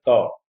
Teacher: ता में ऊपर वाले दांतों को हमारी जीभ जो है बहुत आसानी से जाकर के स्पर्श करती है, इसलिए यह दंत ध्वनि है।